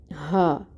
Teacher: یہ جو ہا ہے یہ اقصی الحلق سے نکلتی ہے، بھاری ہا ہے